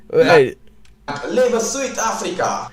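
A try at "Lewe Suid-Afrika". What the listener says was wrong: Yeah, like, his pronunciation is wrong. It's not he's pronouncing it like English, but UI in Afrikaans is like it's not Zuid-Afrika, it's Zuid-Afrika. It's sort of this halfway point between au and I. Zuid-Afrika.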